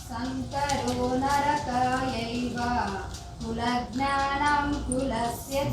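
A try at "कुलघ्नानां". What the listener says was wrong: జ్ఞాన కాదు, ఘ్నా. ఘా పెద్దది. కులఘ్నానాం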